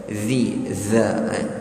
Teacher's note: Pastikan huruf dza, hujung lidah kita temukan di antara hujung gigi hadapan kita.